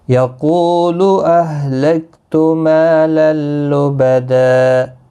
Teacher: وقف کی صورت میں 2 زبر کو بدل کر 1 زبر کے ساتھ وقف کریں گے ، وقف بالابدال ہوگا۔ یقول اہلکت مالا لبدا ایحسب ان لم